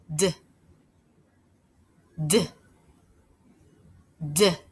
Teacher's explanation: what you feel is a quick sound we cannot stretch it out · things that you may have noticed while making the d sound i could feel the front of my tongue tapping up behind my top teeth